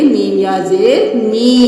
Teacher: अब ये सिर्फ हरकत नहीं है कि जल्दी से अदा कर दें, मीम के साथ या मद्दा भी है, यानी मद्दा वाले हरूफ को एक अलिफ के बराबर खींचते हैं